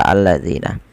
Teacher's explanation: Alif lam lazimah yaitu alif lam yang dia tidak bisa dipisahkan daripada kata tersebut seperti kata alladzina. Tapi juga ia bisa kita golongkan dengan alif lam syamsiyah yang mana lamnya diidgamkan kepada huruf lam setelahnya · alif lam syamsiyah, yang mana lamnya diidghamkan kepada huruf lam setelahnya